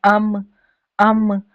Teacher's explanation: Like अब आप कहें अम अम तो आपके लिप्स का बैरूनी हिस्सा जो है वो क्या है? मीम का मखरज है। यानी जब भी आप तिलावत कुरान में अब अम या कोई भी लफज़ पढ़ेंगे तो आपके फेस का यही हिस्सा इनवॉल्व होना चाहिए।